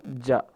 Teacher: زبان کے درمیانی حصے کو منہ کے تالو کے درمیانی حصے کے ساتھ لگائیں گے تو ادا ہوگا جا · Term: جیم کا مخرج